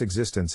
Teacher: the International Phonetic Alphabet to pronounce existence have in mind that the size of the syllable indicates where the accent or stress is in this case the accent is in the second syllable